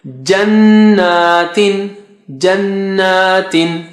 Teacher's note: So you have Gunna for noon and small alif.